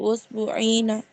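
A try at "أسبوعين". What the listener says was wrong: Usbu'aini ya, bukan usbu'ina tapi usbu'aini. Aini. Bi fathil ain.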